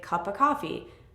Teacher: Whenever you have a phrase with of in it, like cup of coffee, we don't say of completely.